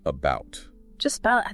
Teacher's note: That very neutral unstressed vowel sound like the a in about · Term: schwa sound